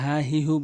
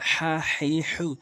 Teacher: কখনোই হা হি হু বলবেন না, অর্থ চেঞ্জ হয়ে যাবে। এখানে চাপ দিয়ে হা হে হু।